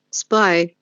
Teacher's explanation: That would be S sound, P sound, then the diphthong I, AI.